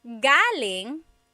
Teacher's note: So, galing, the emphasis is on the first syllable. That means coming from.